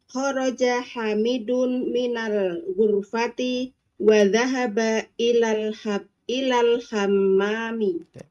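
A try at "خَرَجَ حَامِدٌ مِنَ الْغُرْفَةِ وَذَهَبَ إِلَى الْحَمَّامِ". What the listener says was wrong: Hamidun haknya panjang. Coba diulangi Ibu.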